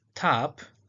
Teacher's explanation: In the word tap, the T is aspirated.